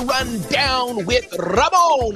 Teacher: I don't know why I trilled my R's, because I'm not Hispanic.